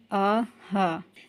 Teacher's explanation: یہ جو دو حروف پڑھے یہ حلق سے، درمیانی حلق سے اوپر یعنی منہ والی سائڈ سے پڑھے گئے، اور یہ درمیانی حلق سے نیچے یعنی سینے والی سائڈ سے ادا ہوں گے، اور یہ نارمل ادا ہوں گے۔ ان کو آرام سے اور سکون سے ادا کیا جا سکتا ہے، جیسے آ ہا۔